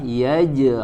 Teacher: huruf Jim sukun dipantulkan Qalqalah